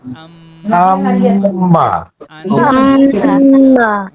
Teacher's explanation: একালিফ, একালিফ আন্না হবে, গুন্নাটা একালিফ, টান হবে না, এইটা একালিফ পরিমাণ হবে, আম, আম্মা আন্না, আম্মা ওকে, এই আম্মা গুন্নাটা একালিফ হবে